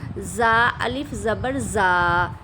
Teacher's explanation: زا کو آپ نے ثنایا علیہ کا کنارہ اور ثنایا سفلیٰ کا کنارہ اور زبان کی نوک آپس میں جب یہ ٹچ ہوں گے تو زا کا مخرج ادا ہوگا